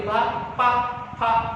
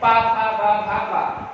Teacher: फा का उच्चारण सिर्फ होठों से होता है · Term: ओष्ठ व्यंजन